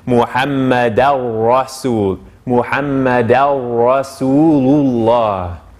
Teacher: So now once again, ashhadu, and now it's anna Muhammada, and then so what happens here is in the Arabic it's Muhammadan, but the n gets absorbed into the ra that comes after it. So the way that we actually pronounce it is Muhammad al-Rasul, Muhammad al-Rasulullah.